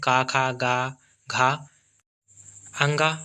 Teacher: कंठ से या गला से निकलने वाले शब्द हैं